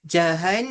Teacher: ada dengung pada nun sabdu wajibul ghunnah